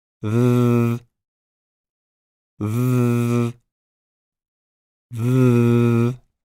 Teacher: should flow between your upper teeth and the tongue note that the V is a voiced consonant sound so you need to add your voice when pronouncing it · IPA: ð